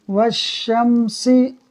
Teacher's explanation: الف اور لام یہ دونوں نہیں پڑھے جائیں گے